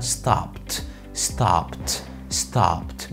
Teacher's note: وهو نطق ال D لما بيبقى T